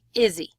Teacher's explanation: Izzy stands for is he, but in North American English we blend it and it sounds like Izzy